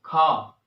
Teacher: कंठ से निकलती है। खा, पूरी अंदर से आवाज आती है कंठ से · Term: का वर्ग